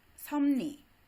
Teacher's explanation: 니은이 비음이니까 이런 현상을 리을의 니은 따라가기, 리을의 비음화라고 부르기도 하는데 섭리 같은 경우 먼저 리을이 니은으로 비음화되고 그 다음에 비음인 니은의 영향을 받아서 비읍이 미음으로 비음화가 되죠. 이렇게 해서 양쪽 다 음운이 바뀌는 현상이 나타나게 되는데 이것을 상호동화라고 합니다.